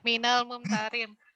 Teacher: Mim bertasdid itu mim pertama mati, mim yang kedua hidup loh.